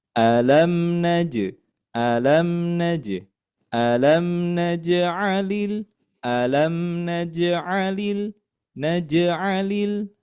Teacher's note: Kemudian di sini ada jim yang dalam keadaan sukun. Ah jim huruf jim yang berada di tengah kalimat kemudian dia harakatnya dalam keadaan sukun. Maka ya ini dibacanya dipantulkan. Ah, maka ada istilahnya yang namanya qalqalah.